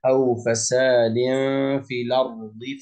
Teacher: الراء هنا مفخمة، ساكنة مسبوقة بفتح